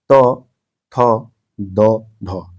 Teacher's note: जिनका उच्चारण ऊपर के दांतों पर जीभ लगाने से होता है · ये अक्षर बोलने पर आपके ऊपर वाला जो दांत है उसको टच हो रहा है